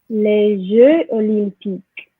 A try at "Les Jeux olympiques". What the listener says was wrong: Okay, for this one though, there is a liaison. Les Jeux olympiques. Les Jeux olympiques.